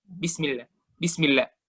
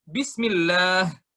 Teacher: sampai ke nafasnya H itu yang dalam, yang mana huruf H itu dari tenggorokan paling bawah kita ucapkan